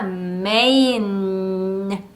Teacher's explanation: N도 유지되는 성향이기 때문에 메인 하고 끝나는게 아니라 메인 하고 소리를 유지시켜 주시는 것이 중요합니다